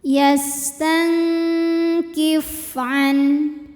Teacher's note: Yastang dengungnya besar. Yastang kif fa salah satu sifatnya dari segi keluar tidaknya angin yaitu hams, ada angin keluar.